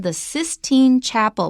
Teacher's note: the sistine chapel both are stressed